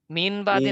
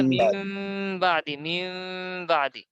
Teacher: নুন সাকিনের পর বা আসার কারণে এখানে একটা ছোট মিম দিয়ে মিলিয়ে পড়তে হবে। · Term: ইকলাব